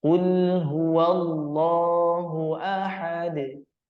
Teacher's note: bertanda sukun di kalimah KL nah ketika kita menyebutkan huruf lam agar dia tidak seolah memantul atau seolah-olah ada Qalqalah maka kita perlu habiskan terlebih dahulu suaranya pada huruf lam sukun tersebut Qulhu langsung disambut qulhuallahu agar tidak terdengar seperti quul quul Nah